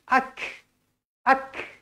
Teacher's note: huruf Kaf Hamas mestilah dibaca berangin